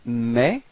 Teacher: you can see that you don't pronounce the final S, okay, but this combination ES gives you the sound E, okay?